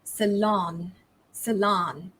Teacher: in american english this stress falls on the second syllable and it's also pronounced differently